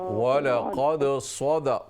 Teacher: सद full mouth से मोटा करके